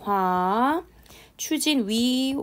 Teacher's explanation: 이중모음 자체가 단모음처럼 한 번에 발음이 나는 게 아니라 와 같은 경우는 오 발음하면서 아로 빨리 넘어가야 되는 거고 워 같은 경우에도 우 하면서 어로 빨리 넘어가야 되거든요